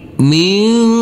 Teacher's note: Huruf nun kita baca dengan samar-samar dan berdengung. Persiapan pada waktu berdengung, persiapan masuk ke huruf zal.